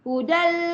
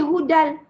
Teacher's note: Pendek je. Lepas tu dia masuk tanpa dengung. Ya. Idgham bila gunnah.